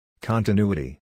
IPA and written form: ˌkɒntɪˈnjuːəti (continuity)